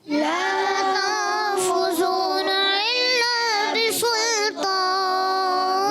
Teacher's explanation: لام الف زبر لا, ایک الف کھینچنا ضروری ہے, بہت ضروری ہے.